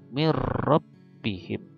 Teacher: diidghamkan ke ro, tapi tidak gunnah, tidak mendengung